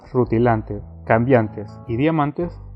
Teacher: Lo que tienen en común las palabras rutilantes, cambiantes y diamantes es su terminación de antes. Todas estas tienen la mayor fuerza de voz en la A de antes, y aunque sus sílabas sean en las palabras rutilantes lan, en cambiantes bian y en diamantes man, lo que nos interesa es que a partir de la vocal tónica todas las letras son exactamente iguales.